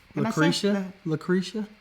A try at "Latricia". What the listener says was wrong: It's a T. L-E-T. You said it wrong.